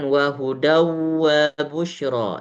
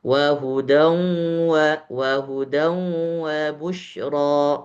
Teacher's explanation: Jadi ketika idgham bighunah itu suaranya itu harus masuk ke hidung · Itu salah karena suaranya nggak masuk ke hidung. Setengah masuk ke hidung, setengah lewat mulut. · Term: idgham bi gunnah